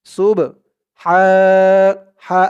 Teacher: মুতাকাব্বির সুবহা সিন দিয়ে বা ধরবে সুব সুব বাটা কলকলার হরফ ধাক্কা দিয়ে পড়তে হবে